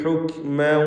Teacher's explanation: അങ്ങനെ ഉച്ചരിക്കണം കാഫിന്. ഹുക്ക് ഹുക്ക് എന്ന ശബ്ദം കേൾപ്പിക്കരുത്, ഖൽഖല വരരുത്.